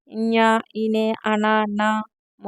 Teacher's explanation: ఇవన్నీ కూడా వర్గ యుక్తులు అంటాము ఇన్ ఇనే అన నామాలను అనునాసికాలు అంటారు ఇవి ముక్కుతో పలుకుతాం కదండీ అందుకే అనునాసికాలు అంటారు